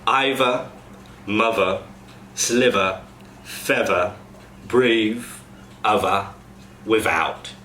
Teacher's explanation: the same noise, the th, when it's in the final syllable of a word, goes to a v. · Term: voice th